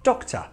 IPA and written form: dɒktə (Doctor)